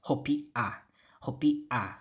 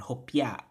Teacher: We want that glided ya sound